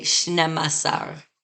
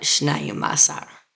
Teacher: And for the masculine, only 12 has a reduced sound for the number 2. We say shnemasar and not shnayumasar.